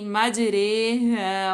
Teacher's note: यानी री नहीं बल्कि रे पढ़ेंगे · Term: इमाला